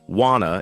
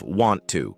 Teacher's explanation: Notice how natives link words, wanna instead of want to.